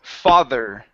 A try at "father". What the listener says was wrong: Now at the end of that, you still need to pronounce the R sound. Father.